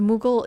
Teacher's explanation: there is just no vowel between the G and the L